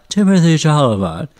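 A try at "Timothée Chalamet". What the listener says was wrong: I mean, I'm not even going to address the problems you had with pronouncing his last name, but I believe it is Timotei, not Timothy.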